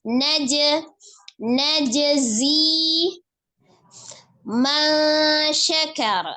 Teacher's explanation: Ada huruf jim dan huruf zai dibedakan secara makhraj juga berbeda. Maka huruf jimnya qalqalah ya. Ketika dia sukun, pantulkan dulu di huruf jimnya.